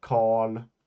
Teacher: We don't really say the R. It just makes the the preceding vowel long